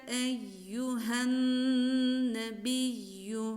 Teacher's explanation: ya harfinin mahreci dil ortasıdır